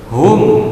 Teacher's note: mim sukun bertemu dengan huruf ha, selain dari mim dan ba, maka disebut idhar safawi, dibaca jelas, tidak mendengung pendek.